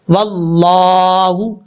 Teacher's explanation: لفظ اللہ سے پہلے واو کے اوپر زبر ہے، اس لیے لفظ اللہ کو پر پڑھا جائے گا، بیچ میں الف اور لام کو چھوڑ دیں گے اور واو کو ڈائریکٹ لفظ اللہ کے لام کے ساتھ ملائیں گے جس لام کے اوپر شد ہے، واللہ، اس طریقے سے۔